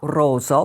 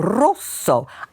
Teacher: when you do a double consonant, it goes up just a bit. There's a slight little pause at the top. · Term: Double consonants